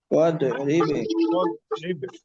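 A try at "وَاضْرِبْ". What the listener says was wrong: দোয়াদের sound নড়বে না। ধরে রাখতে হবে চাপ দিয়া। হ্যাঁ, দোয়াত যেন কলকলা না হয়। এটা আমাদের প্রায় 100-র মধ্যে 90% মানুষের এই দোয়াতে জজম হইলে এটা ভুল হয়ে যায়।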